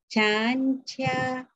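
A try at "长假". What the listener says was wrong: Okey, cia dah betul. Chan tu tinggikan lagi. Chan chia.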